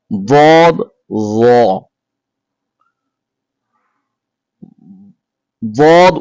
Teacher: দাল হরফ উচ্চারিত হয় জিহ্বার আগা সামনের উপরের দুই দাঁতের গোড়ার সঙ্গে লাগিয়ে। আর দদ উচ্চারিত হয় জিহ্বার গোড়ার কিনারা উপরের মারির দাঁতের গোড়ার সঙ্গে লাগিয়ে দদ উচ্চারিত হয়।